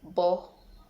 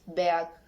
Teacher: Characteristic bilabials stop and voice.